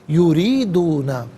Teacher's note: را کے نیچے زیر ہے، را کو باریک کر کے پڑھا جائے گا